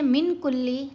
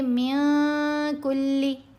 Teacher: احفا میں نون کی آواز کو ناک میں چھپایا جائے گا اور اس کے اوپر غنہ کیا جائے گا